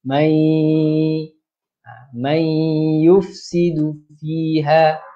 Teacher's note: Nun bertemu dengan huruf ya, nun mati bertemu dengan huruf ya, itu perlu pada dengung dua harakat.